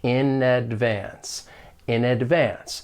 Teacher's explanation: we link the final consonant sound of one word with the beginning vowel sound of the next word · we can link the final consonant sound in with the vowel sound in advance. And it's almost like we're just moving that consonant sound over to the next word or syllable. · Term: linking